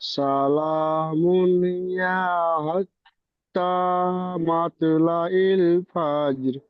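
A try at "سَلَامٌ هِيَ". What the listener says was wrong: ইয়াটি আবার টান হয়ে গিয়েছে। হিয়া, হাজের হি, ইয়া জবর ইয়া, হিয়া, হিয়া। ঠিক এমন ভাবে ইয়া টান হবে না। সালামুন হিয়া, হিয়া, হিয়া বলে ইয়া টান হয়ে যাচ্ছে, টান হবে না। হিয়া, ইয়া, জি, হিয়া, ইয়া বলে টান দেবেন না। সালামুন হিয়া, জলদি।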